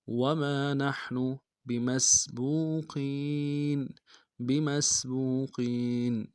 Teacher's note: گے۔ وما نحن بمسبوقین، با کو نرم سے ادا کریں گے، میم کو سین کے ساتھ ملانا ہے، سین کی سیٹی باریک ہوگی ، با کو واو کے ساتھ ملائیں گے، واو مدہ ایک